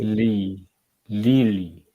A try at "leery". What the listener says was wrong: Okay, still it sound L sound.